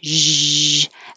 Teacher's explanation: when you say zh, it's the same as sh, but with voicing. So make sound, zh.